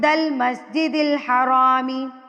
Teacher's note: نون ساکن کے بعد دال آ گیا ہمارے پاس. دل. یہاں پہ نون ساکن کے آواز کو آپ چھپا لیں گے